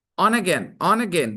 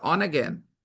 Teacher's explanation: On ends with na. Again starts with a vowel.